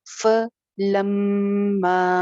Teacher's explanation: ف سنگل حرکت ہے، اس کو فا نہیں بولنا ، ف اینگل جو ہیں زبر کے جیسے میں نے بتائے